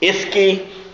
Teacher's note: of course the Creek R is a sh sound. She. Lateral fricative is what the linguists call it.